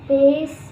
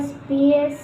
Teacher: Yang pertama pace yang beraspirasi, 2 spies yang tidak beraspirasi